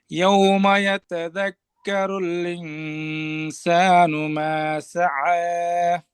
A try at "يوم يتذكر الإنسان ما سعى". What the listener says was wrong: ভাই, ইয়াউমা এখানে আরেকটি স্থিরতা অবলম্বন করে, ইয়াউমা না বলে ইয়াউমা ইয়াতাযাক্কারুল, ইয়াউমা ইয়ার উচ্চারণও আরেকটু স্থির ভাবে। এখানে দ্রুত যদি এইভাবে ইয়াউমা, ইয়াটা স্বাভাবিকের তুলনায় একটু তাড়াহুড়া করে ফেললাম, এমনটা না করা, ইয়াউমা। আর ইনসানু, হামজাতে আরেকটু জোর লাগানো, হামজা যেন তাসিল হয়ে না যায়, ইনসানু।